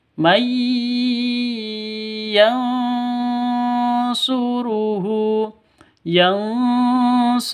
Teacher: Cara bacanya itu masuk ke ya, mai seperti itu, disertai dengung dua ketukan. Idgham bi gunnah.